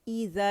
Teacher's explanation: इसे 2 काउंट के लिए आवाज़ ऊपर जाएगी